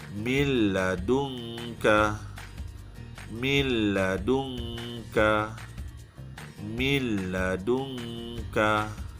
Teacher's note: Bunyikan lam, jangan bunyi nun. Sebab kita idghamkan. Kemudian jangan dengungkan. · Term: idgham bila gunnah